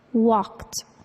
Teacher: The ed verb ending sounds like a t, walked, even though it ends in the letter D.